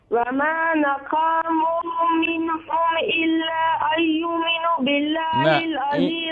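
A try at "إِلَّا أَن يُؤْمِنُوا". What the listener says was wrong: اینجا هم الا ان يؤمنوا يؤمنوا همزه را تلفظ کو.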